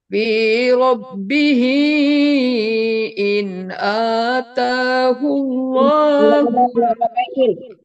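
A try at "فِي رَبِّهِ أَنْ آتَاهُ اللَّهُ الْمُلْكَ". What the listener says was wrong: Fi rabbihi an ata nggak ada innya ya. Coba lama lihat bunda.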